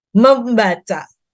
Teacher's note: n menjadi m itu kalau dia diikuti dengan b